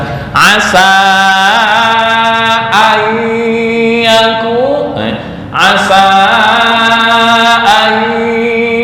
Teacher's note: Kalau a tengah tenggorokan itu ain, bukan hamzah.